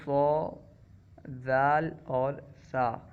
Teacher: وہ حروف جو لثہ یعنی مسوڑے کے قریب سے ادا ہوتے ہیں جیسے ظا ذال اور ثا، یہ تین حروف کیونکہ مسوڑے کے قریب سے ادا ہوتے ہیں اور مسوڑا اس کو لثہ کہا جاتا ہے، مسوڑے کو لثہ کہا جاتا ہے، اسی وجہ سے ان حروف کو حروف لثویہ کہیں گے۔